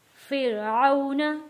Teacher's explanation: फिर यहाँ पे वाव साकिन है, वाव साकिन से पहले जबर है, यहाँ हम पढ़ेंगे आउ। फिरऔन हरूफे लीन है इसलिए हमने यहाँ इसको खींच कर नहीं पढ़ा